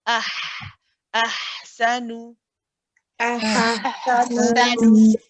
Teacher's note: the ha is a letter of rahawa. It is a letter that you can stay on. So you can keep it running. You don't have to say ahsanu.